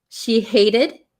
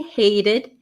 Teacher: Notice the T becomes a flap T